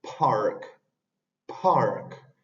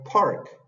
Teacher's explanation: la p y la k sin embargo cuando van al inicio de las palabras va aspirada eso significa que se le pone en ocasiones estea esa pequeña